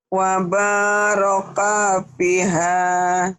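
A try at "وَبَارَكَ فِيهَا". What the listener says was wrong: Kaknya pendek. Wa baraka fiha.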